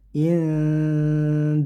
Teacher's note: didengungkan samarkan antara nun sukun masuk bersiap ke huruf Dal indbihim disertai dengung yang lama sekitar tiga harakat atau satu setengah Alif · nun sukun bertemu dal, ini namanya ikhfa, jadi disamarkan dan didengungkan. Samarkan antara nun sukun masuk bersiap ke huruf dal.